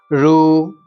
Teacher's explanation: રૂ અંદરથી મૂર્ધામાંથી બોલાય છે એટલે તેને મૂર્ધન્ય કહેવામાં આવે છે